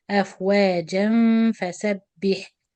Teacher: So if I ask the student what are the rules in this word waqfan and waslan, he will answer that waqfan is مد عوض حركتين and he pronounce it أفواجا, and waslan will be إخفاء with غنة. The غنة will be light.